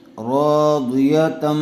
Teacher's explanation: یا زبر یا، راضیہ، تا میم دو زبر تم، راضیتم، را کے اوپر زبر ہے اس لیے پر ہوگا، الف مدہ آیا ہوا ہے تھوڑا کھینچ کر پڑھیں گے۔